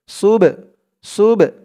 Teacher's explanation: বাটা কলকলার হরফ, ধাক্কা দিতে হবে।